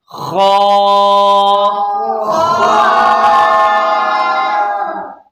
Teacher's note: ابتدائی حلق یعنی حلق کے اوپر والے حصے سے خا ادا ہوگی